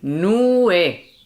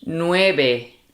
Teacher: And then the V is pronounced as the B. Nueve. And of course the last E is also pronounced.